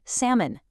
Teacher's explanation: Think about the word salmon. Entirely dropping the L